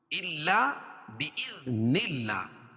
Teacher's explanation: اللہ کے لام سے پہلے زیر ہو تو اللہ کا لام باریک پڑھا جاتا ہے